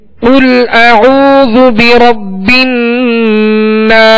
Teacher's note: حروف مستعلیہ میں سے قاف کو پر پڑھیں گے